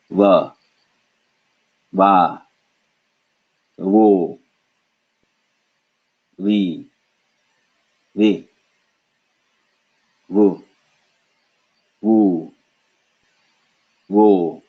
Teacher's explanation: the top front teeth vibrate a little bit against the back of the bottom lip. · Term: Hindi V sound